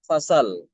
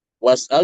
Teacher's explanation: Jadi hamzahnya dia dibuang ya untuk Imam Alfisi hamzahnya itu dibuang tapi harakatnya harakat hamzah itu dipindah ke huruf sebelumnya yaitu sin. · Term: naqal